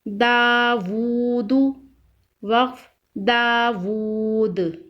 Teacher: دال الف زبر دا، واو الٹا پیش وو، داوو، دال پیش دو، داوود، وقف داوود، دال پر قلقلہ کریں گے وقف کی صورت میں، दावूद, वक्फ दावूद।